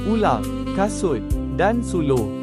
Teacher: Semasa bunyi ini dihasilkan, pita suara bergetar. Bahagian belakang lidah dinaikkan paling tinggi menghampiri langit lembut. Lelangit lembut dinaikkan untuk menutup rongga hidung. · Lelangit lembut dinaikkan untuk menutup rongga hidung. Bibir berada dalam keadaan bundar. · dikenali sebagai vokal belakang sempit atau vokal belakang tinggi